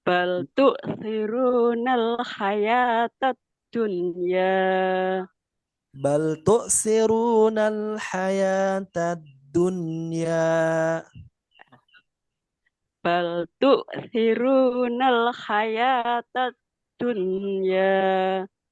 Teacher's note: Oke, nunnya satu harokat ya, tidak dua atau tiga ya.